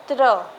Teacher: जब आप लोग त्र बोलते हैं तो आपको त और र की ध्वनि सुनाई भी देगी